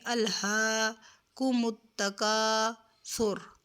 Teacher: اس کی مقدار 1 الف کے برابر ہے، اس کو 1 الف کے برابر کھینچ کر پڑھیں گے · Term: الف مدہ